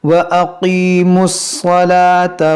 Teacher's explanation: یہ میم صاد سے ملے گا، یہ واو الف یہ سب نہیں پڑھا جائے گا، اور یہ ہماری سانس یہاں ٹوٹی تو ہم نے اس گولتا کو ہا ساکنہ سے بدل دیا، صلاح۔